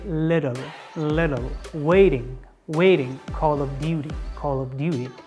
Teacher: They mostly change the T to D letter. I mean in standard American accent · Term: replacing T to D